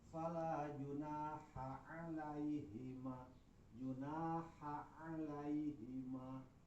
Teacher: Karena ha jeung ain eta sa makhraj sama-sama tengah tengah tiqoro atau tiqoro belah tengah oge si ain eta leuwih kuat batan ha. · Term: samakhroj